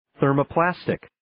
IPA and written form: ,θɜːrmə'plæstɪk (Thermoplastic)